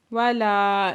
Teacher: لام پہ الف مدہ دو حرکت کھینچ کے پڑھیں گے، ینفعہم نون ساکن کے بعد فا ہے تو یہاں پہ اکفا